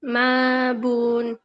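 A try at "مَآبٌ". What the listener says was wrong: আপনি পড়তেছেন মা বোন, তাহলে হামজা কোথায়? মিম জবর মা, হামজা খারা জবর আ, মা আ, বা দুই পেশ বোন, মা আ বোন, মা আ বোন, মা আ বোন।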